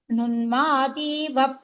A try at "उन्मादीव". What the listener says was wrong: Don't Nunmadiva I heard, not Nunmadiva. Unmadiva only.